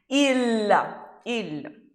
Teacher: Letra L em italiano nunca vai ter som de U como tem no português